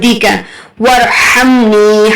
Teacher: یہاں پر ہا جو ہے مڈل تھروٹ سے ادا کریں گے